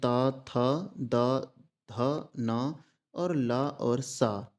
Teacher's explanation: सपेरा वाला सा जो होता है इसका उच्चारण स्थान दंत है